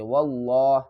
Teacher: یہاں پر بھی اقلاب کا قاعدہ دوبارہ پھر آ رہا ہے، واو کو لام لفظ اللہ کے لام سے ملائیں گے، اس کو پر پڑھیں گے